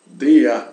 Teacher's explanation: quando as palavras acabam em R, né? Em alemão, nós pronunciamos esse R como se fosse uma A